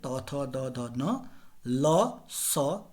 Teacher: त वर्ग त थ द ध न ल स दंत स्थानी कहे गए हैं